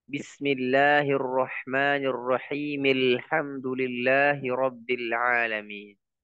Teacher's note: ketika Hamzah wasal ini ya ada di tengah ya maka dia tidak dibaca